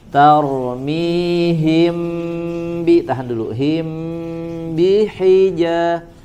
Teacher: Jangan jeda, jangan diputus suaranya. Tarmihim. Ada tambahan gunnah ditahan.